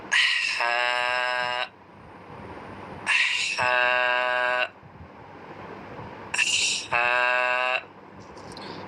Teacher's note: হায়ের মাখরাজ হচ্ছে কণ্ঠনালীর মাঝখান থেকে শ শ আওয়াজ করে উচ্চারণটি করতে হয়।